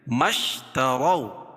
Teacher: اس کو ملانے کی صورت میں حمزہ گر جائے گی تو میم کو شین میں ملائیں گے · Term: حمزہ وصلی